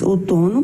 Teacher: na palavra outono a sílaba mais forte está na penúltima posição